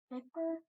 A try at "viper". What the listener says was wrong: Did you open up the first syllable? It'll actually say I. So read that word with an I.